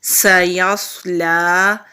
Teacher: سین کے اوپر زبر ہے، یا کو صاد سے ملائیں گے، صاد حروف مستعلیہ میں سے ہے، موٹے حروف میں سے ہے، موٹا پڑھیں گے